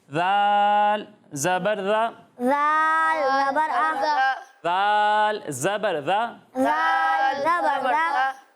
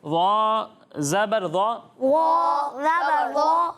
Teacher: دال کو ہم باریک پڑھتے ہیں, ضاء کو پر پڑھتے ہیں